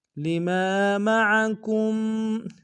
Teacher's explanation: لما میں ما کے ساتھ الف مدہ ہے، الف مدہ کو 1 الف دال میں کھینچیں گے۔ میم و عین کو نم سے ادا کریں گے۔